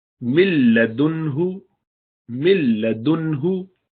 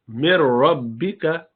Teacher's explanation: ان میں وہ نون بالکل گرا دیا جائے گا، نون پڑھا ہی نہیں جائے گا، ناک سے کوئی آواز نہیں آنی چاہیے. تو ملدن، دیکھیے ملدن، ملدنہ، ملدنہ، اس میں نون کی کوئی آواز ہی نہیں ہے.